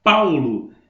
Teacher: eu tenho o a e eu tenho o u tá vendo Então ele é decrescente primeiro o a depois o u · Primeiro o A, depois o U. E ele é decrescente.